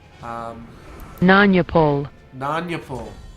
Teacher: the accent or the stress is still on the first syllable